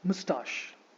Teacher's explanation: The right pronunciation for this word is actually mustache. So instead of the ch sound, जो ch sound है उसकी जगह पर आपको sh sound देना है